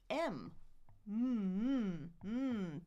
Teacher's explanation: B's and M's are both bilabials we use our two lips for them so the difference is the air number one is going my nose. · And I think we already talked about this bilabial that's my in my name right m two lips air coming out my nose